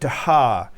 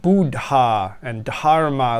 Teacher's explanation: D with an H this is an aspirated D